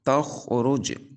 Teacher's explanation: تخرج، خا اور را کے اوپر پیش آنے کی وجہ سے ان دونوں کو پر پڑھا جائے گا۔ جیم حروف قلقلہ میں سے ساکن ہے، تو قلقلہ خوب ظاہر کریں گے